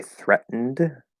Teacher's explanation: glottal stop t syllabic n and then an ed ending